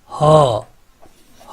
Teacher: काकल्य बोलते हैं उनको जिनके उच्चारण में जो स्वर तंत्री हैं उनमें कंपन होता है। जैसे कि ह एक काकल्य वर्ण है।